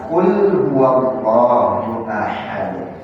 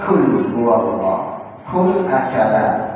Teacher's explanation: Kalau di kaf atau kalau di qaf itu ada syiddah, kaf pun harus ada syiddahnya. Tapi qaf itu tidak boleh ada hamasnya, sedangkan kaf ada hamasnya.